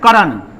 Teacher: अब देखिए ध्यान से इस बात को समझिए, करण जब पढ़ते हैं करण, तो क पर ज्यादा जोर दिया जाता है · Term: बलाघात